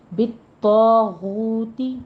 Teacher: طا بھی پر ہے، طا کے پر تشدید سختی سے ادا کیجیے، اور طا کے بعد الف مدہ ہے وہ بھی پر ہو جائے گا ساتھ میں